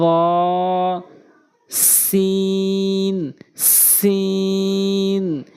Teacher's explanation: জিহ্বার আগা উপরে নিচে দুই দাঁতের আগার সঙ্গে।